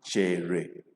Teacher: the past tense of Chee is low tone, Chere. This E, we have low tone. This E, we have low tone.